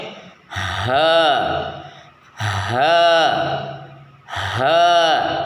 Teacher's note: rongga tenggorokan bagian bawah sedikit menyempit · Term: huruf ha